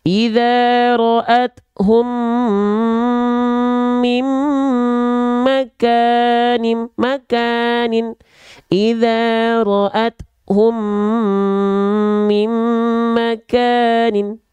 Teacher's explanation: Leburkanlah bunyi mim mati berwarna pink yang bertemu dengan mim bertasydid disertai dengung selama 2 harokat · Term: idgham mithlain